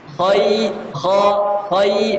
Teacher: Kha itu tebal, ya tipis. Khai dan dagunya harus ke bawah untuk mendapatkan ketipisan ya.